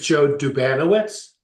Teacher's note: accent on the second syllable